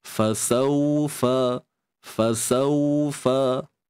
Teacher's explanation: Di sini terdapat bacaan lin ataupun sifat lin, yang mana kita tahu waw ni adalah sifat yang lunak jika sebelumnya berbaris atas. Fasaufa, fasaufa. Muncung bibir sudah pasti.